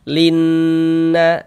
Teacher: di bagian linnya itu suara itu kita tahan, kita panjangkan sejenak. Linna, linnya itu suaranya kita tahan, kita panjangkan sejenak. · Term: gunnah musyaddadah